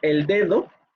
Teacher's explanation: Si tuviéramos el caso que aquí dijéramos el dedo, aquí también sería oclusiva porque está ante una lateral